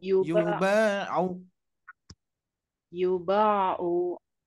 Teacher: hati-hati u-nya jangan sampai Kepanjangan Bu